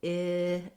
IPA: ɪ